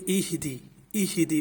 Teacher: اگر اہدے پڑھا تو وہ مجہول طریقہ ہوگا، اور یہاں پر لکھ دیا ہے کہ دراز بھی نہیں کرنا اور معروف پڑھنا ہے، بغیر دراز کیے معروف پڑھنا ہے۔ تو ایہدی پڑھیں گے، اہدے نہیں پڑھیں گے۔